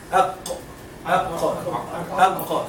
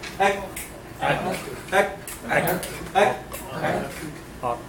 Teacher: The points of articulation, the place of the qaf is a little bit behind kaf.